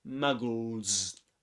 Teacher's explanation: And that's why in the word muggles, the final S letter is pronounced as Z, because L, this one is voiced. There's a vibration in the vocal folds.